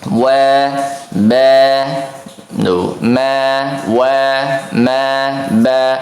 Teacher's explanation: Kalau untuk bibir tepat di bibir yang dua-duanya bekerja ya, maka ini ada huruf ba, huruf mim dan huruf waw seperti itu.